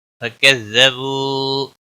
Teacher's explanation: واو مدہ ہے، ایک الف کے برابر کھینچ کر پڑھیں گے، باقی کسی بھی حرکت والے حرف کو کھینچنا نہیں.